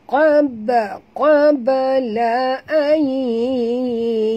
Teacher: Nun mati bertemu ya, idgham ma'al gunah. Masukkan bunyi nun ini ke dalam huruf ya seratus peratus dengan dengung dua harakat ya.